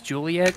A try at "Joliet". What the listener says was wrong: Joliet, not Juliet. You said Juliet, my man.